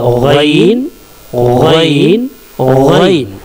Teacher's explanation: इस लेटर को देखें, गैन गैन गैन, ये गैन जो है सीने की तरफ से अगर देखें तो आखिर हलक से निकलेगा, गैन अगर मुंह की तरफ से देखें तो शुरू हलक से गैन निकलेगा।